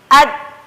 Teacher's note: Di situ tidak sepenuhnya suara dialirkan, akan tetapi di situ terdapat suara yang ditahan. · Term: sifat syiddah